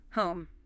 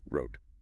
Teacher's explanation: Then you glide towards an ear sound, like the ooh in book. As you glide, your lips gently round and your tongue pulls back slightly. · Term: a diphthong